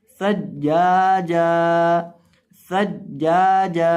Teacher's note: जिम को आपने एक अलिफ के बराबर लंबा करके पढ़ना है। और जब वक़फ़ करेंगे तो इस जिम को भी एक अलिफ के बराबर लंबा करेंगे वक़फ़न, सज्जाजा, सज्जाजा।